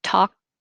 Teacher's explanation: i would hold my tongue in the k position